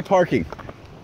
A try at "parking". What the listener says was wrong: I didn't hear a W. I'm only hearing an A.